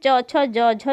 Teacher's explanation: च छ ज झ जो आपका है वो स्पर्श संघर्षी व्यंजन है